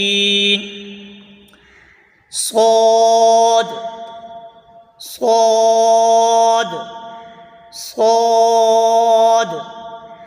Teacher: जबान की नोक और दोनों दांतों के अंदरूनी किनारे से अदा होता है · زبان کی نوک اور دونوں دانتوں کے اندرونی کنارے سے ادا ہوتا ہے